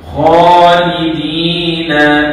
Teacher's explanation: kha tu panjang dua harakat. Lidina di situ panjang dua harakat. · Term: mad asli